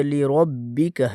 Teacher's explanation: را کو موٹا، با کے اوپر شد ہے سختی کے ساتھ